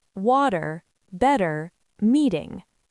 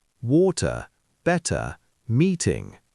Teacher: In American English, the T in the middle can become a soft D sound. That's called a flap. · American, water, better, meeting. British usually keeps the T clearer.